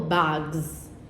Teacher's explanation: z after voiced non-sibilants